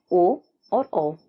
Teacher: कंठोष्ठम वर्ण उन वर्णों को कहा जाता है जिनका उच्चारण स्थान कंठ और होठ होता है।